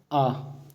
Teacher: जिन स्वरों का उच्चारण करते समय मुख संपूर्ण खुल जाता है उसे विवृत स्वर कहते हैं।